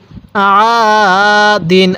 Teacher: আইনটা গলার মধ্যে চাপ দিব পড়ুন আদিন এক আলিফ টান দিব জবরের পরে খালি আলিফ এক